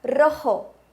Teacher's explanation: Essa é uma palavra clássica para exemplificar a diferença do R e do J no espanhol. O R, la R, tem um som vibrante e o J, la J, tem um som que vem da garganta, parecido com o nosso R de rato do português.